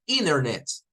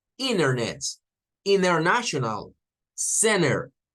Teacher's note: como que fuera la n nada más sin la t